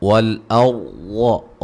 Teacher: را کو موٹا ادا کریں گے، را ساکن سے پہلے زبر ہے